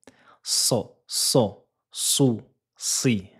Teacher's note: se prononce en faisant toucher le bout de la langue sur le haut des incisives inférieures. On doit entendre un léger sifflement.